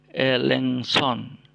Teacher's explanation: Tapi dalam pengucapan K-nya menghilang, tidak disebutkan, ya, tidak diucapkan. Yang diucapkan adalah NGS.